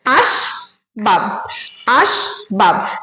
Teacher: স্বরধ্বনি উচ্চারণ হচ্ছে না সুতরাং এটা কিন্তু রুদ্ধ দল আর এখানে বাব যখন বলছি তখনও ব এর সঙ্গে কোন স্বরধ্বনি উচ্চারণ হচ্ছে না তাহলে এখানে দুটো দল আছে দুটো দলই কিন্তু রুদ্ধ দল এটা